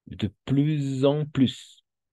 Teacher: Cuando hay una S al final y la siguiente letra comienza por una vocal, ahí vamos a por una Z, vibración Z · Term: La liaison